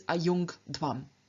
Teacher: we then find the nasal appearing not as a palatal nasal, but as the velar nasal. However, given that dh begins with a voiced stop, the palatal that has now changed into a velar can also remain voiced.